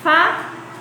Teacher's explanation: fa ele tem um som mais forte então fá é a sílaba tônica dessa palavra